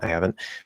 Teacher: drop the H, connect I to ah, like probably a lazy ah, with a small Y.